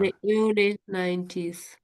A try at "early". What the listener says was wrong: So we just say for that early, early. I think you're sort of trying to pronounce the R just a bit too strongly. So just on the whole, tone down the R's a little bit.